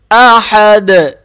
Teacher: یہاں پر قلقلہ کر دیں گے دال پہ